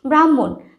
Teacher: আমরা কিন্তু হ এর উচ্চারণটা খুব কম করি